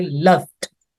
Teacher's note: Kalau dia berhadapan dengan yang voice, misalkan loved, dia jadi akan D